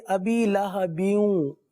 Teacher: یہاں پر ادغام کا قاعدہ ہے، غنہ کے ساتھ پڑھیں گے